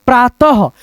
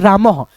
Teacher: विसर्ग का उच्चारण ह के रूप में हो रहा है।